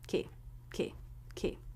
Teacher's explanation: then we go into the e as in she vowel monkey since it's in an unstressed syllable it should be very short and low in Pitch